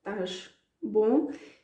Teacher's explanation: you hear the 'sh' at the end of the verb